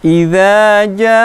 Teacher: Bacaan mad wajib mutasil. Panjangnya 5 sampai 6 harokat ya.